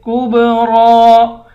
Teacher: کاف کو با کے ساتھ ملا کر با پہ قلقلہ کریں گے